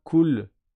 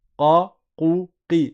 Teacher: c'est plus profond dans la bouche. C'est vraiment une lettre qui est très profonde dans la bouche, qui est proche des lettres de la gorge. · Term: qaf